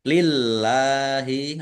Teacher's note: lamnya dibaca tipis karena harokat di depannya kasroh